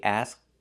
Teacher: So the K is a stop K asked. We don't release it. The T is a stop T asked.